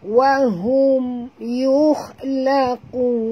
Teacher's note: mim mati bertemu ya, masuk tapi tak boleh dengung, ya. Jangan pula kita biarkan pula mim ni terbuka mulut.